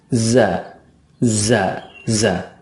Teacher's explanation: makhraj dari zai adalah ujung lidah. Ingat ya, ujung lidah itu ditempelkan dengan gigi seri yang bawah.